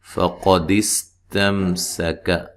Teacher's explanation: قاف کو موٹا ادا کریں گے، سین کو ہلانا نہیں ہے اور باریک پڑھنا ہے